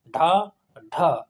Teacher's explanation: यानी कि उच्चारण में जीभ पहले क्या होती, ऊपर उठकर मूर्धा को स्पर्श करती है और झटके के साथ नीचे आ जाती है, अर्थात जो उच्छिप्त या द्विगुण व्यंजन होते हैं उनका जब उच्चारण करते हैं ना हम लोग, तो जीभ होती है ना, तो ऊपर को उठती है और मूर्धा से टकरा के नीचे झटके से पहुंच जाती है। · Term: उच्छिप्त व्यंजन